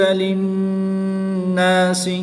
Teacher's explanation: نون مشدد میں غنہ کریں گے